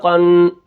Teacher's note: اب یہاں پر قاف کو ہم کیا کریں گے؟ موٹا کر کے پڑھیں گے کیونکہ یہ حروف مستعلیہ میں سے ہے